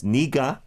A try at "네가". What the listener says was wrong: Yes, 네가, but what I want to say is in Korean, even though you want to really emphasize, you don't like do it in staccato. Like, 네가 언제부터? We don't say it like that. 네가, we already know this.